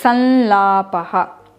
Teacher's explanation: you can replace the anuswara with the nasal sound of la, and you can write and pronounce it like this, sanlapaha.